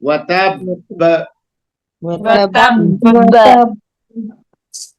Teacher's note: وقف کریں تو اسٹرانگ درجے کا قلقلہ ہوگا، ہائی لیول کا، اونچا سب سے اونچا ہوگا